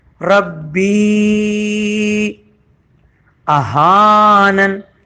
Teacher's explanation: حمزہ پہ سے گزر کے ہا الف زبر ہا کو ایک الف کے برابر کھینچا ہے